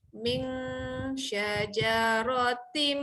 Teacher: Tengah-tengah lidah. Okay, untuk huruf shin tengah-tengah lidah naik ke atas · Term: ifah hakiki